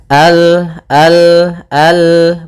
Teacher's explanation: Al kemudian Al hati-hati dalam lafal lam sempurnakan makhraj daripada lam ujung lidah apa melekat dengan langit-langit atas